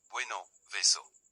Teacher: B and V. The letters B and V are pronounced the same in Spanish. At the beginning of a word or after a pause, they sound like a soft b, e.g.